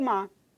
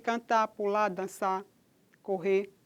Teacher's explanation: quando o pernambucano diz mar, ele apaga esse rótico aí, esse R, esse segmento final de sílaba e diz mar. Eu vi o mar. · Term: apagamento